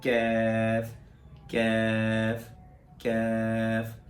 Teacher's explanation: کاف جڑ سے ذرا آگے آ کر منہ کی طرف آگے آ کر وہاں سے کیف ادا ہوتا ہے